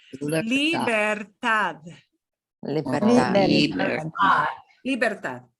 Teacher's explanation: And here's a D that's hanging off the very end. So it's going to sound like a TH. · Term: D that sounds like a TH